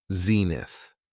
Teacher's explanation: It has 2 syllables, and the stress is on the first syllable